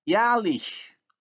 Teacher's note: Now the vowel A has moved from back to front because of the influence of the suffix vowel, which is also front. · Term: umlaut